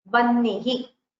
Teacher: You will not say Vahnihi. You will not pronounce the Hakara first. You will pronounce it as Vannihi.